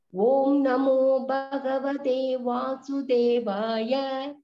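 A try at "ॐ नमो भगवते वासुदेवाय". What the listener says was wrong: பா அழுத்தணும் பகினி கொஞ்சோண்டு. பகவதே கிடையாது, பகவதே.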